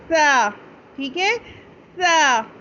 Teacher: तो ता बहुत सपाट आवाज़ में, लेकिन सा बहुत सॉफ्ट और सीटी की आवाज़ के बग़ैर